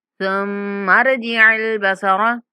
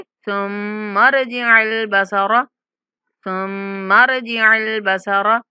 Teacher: मीम पर गुन्ना करते हुए रा के साथ मिलाएंगे।